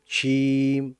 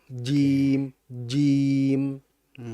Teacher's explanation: Jim itu ini ya, jahar ya. Jahar. Dia nggak boleh ada desisan. Iya. Kemudian yang kedua dia adalah syiddah.